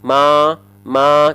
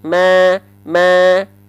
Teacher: bedakan antara tanpa senyum Ma dengan senyum Ma lebih tipis yang dengan senyum senyumnya engak usah ber senyum tipis-tipis aja Biar kerasa tipisnya paham